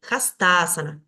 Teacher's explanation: va a recaer el acento en la sílaba fusionada